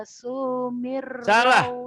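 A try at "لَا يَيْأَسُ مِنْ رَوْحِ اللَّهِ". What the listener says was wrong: pendek sunya. La yai asu. Pendek, nggak ada yang panjang. Mirrohillah, tipis. Karena sebelum pada Allahnya baris di bawah. mirrohillah, bukan. Mirrohillah. Tipis, sebelum pada Allah baris di bawah.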